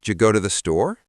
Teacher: The D and Y at the beginning, they kind of blend together. Oh, ja. So it's not that you're actually saying the sounds, it's that they're blending.